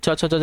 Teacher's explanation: छ, छ, ज, ये आपके देखिए तालु में आते हैं।